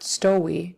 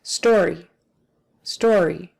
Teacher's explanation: If you don't get the R in there, it'll almost turn into a W